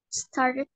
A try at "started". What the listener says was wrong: You need to say it with clear ED. So instead of start, you need to say started.